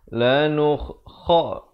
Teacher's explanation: Lanukha, pula makhrajnya di mana? Di hujung kerongkong.